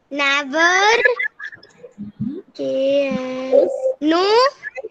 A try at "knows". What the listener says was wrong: Nose. S भी लगा है ना.